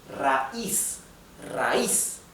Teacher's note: the I, which is the weak syllable, the weak vowel, is where the accent or the stress or the intonation goes